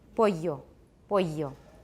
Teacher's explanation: in Latin America, at least in most places, they pronounced double L like a Y